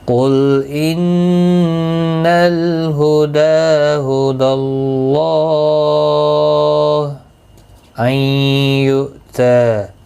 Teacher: نون ساکن کے بعد یارملون کا یا آیا ہے، ادغام مع الغنہ ہوگا، غنہ کے ساتھ پڑھیں گے